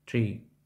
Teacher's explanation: Схоже на український звук T, однак він вимовляється з придихом та м'якіше за український T.